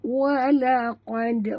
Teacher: Walaqad, huruf qaf tebal, dal mati di tengah kalimah, lantunkan dia, ya, qalqalah surah